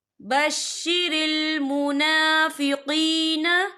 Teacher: اور آگے دیکھیں منافقین، قین، یہاں پہ یا مدہ ہو رہا ہے، یا ساکن ہے، یا ساکن سے پہلے زیر ہے، تو ہم یہاں 2 یا 3 عدد کے برابر کھینچے پڑھیں گے۔